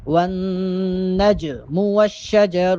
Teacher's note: اور والنجم، جیم چونکہ ساکن ہے اور جیم حروف قلقلہ میں سے ہے، حروف قلقلہ 5 ہیں، قوف طا با جیم دال، تو ان میں چونکہ جیم بھی ہے اور جیم یہاں پر ساکن ہے، لہٰذا جیم پہ قلقلے کی آواز پیدا ہو